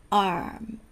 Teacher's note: その▁r▁の時にはベロがどこにもつかない、空中で浮かせる▁r▁ですね